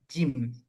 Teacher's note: jim itu ada di tengah-tengah lisan, dia nempel dengan langit-langit. Jim di tengah-tengah lidah nempel dengan langit-langit di sini.